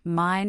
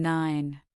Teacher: For mine, your lips are firmly closed and the sound resonates through your nose. For nine, your tongue is against your teeth ridge and the nasal sound is directed there.